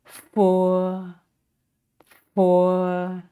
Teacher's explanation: the sound is not aspirated is just as in the English word fat